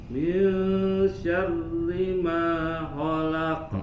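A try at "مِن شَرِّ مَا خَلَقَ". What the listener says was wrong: Kho-nya sempurnakan. Kho, coba. Lagi kho. Tidak terlalu agak sedikit tertahan. Kho. Lagi kho. Khi. Khu. Lagi kho. Khi. Khu. Min syarri ma khalaq. Qafnya tebalkan, pantulannya khalaq.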